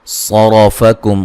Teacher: सुम्मा मीम मुशद्दद पे गुन्ना ज़रूरी है। सरफ़कुम सौद को मोटा अदा करेंगे, रा को मोटा अदा करेंगे।